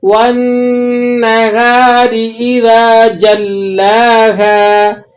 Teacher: والنہار، را باریک ہے، اذا یہ الف مدہ ہے، ایک الف تک کھینچ لیں گے۔ اذا جلاها، لام مشدد بھی ہے اور لام پہ کھڑا زبر بھی ہے، اس لیے آپ نے اس کو جماؤ کے ساتھ ایک الف تک کھینچ کر پڑھنا ہے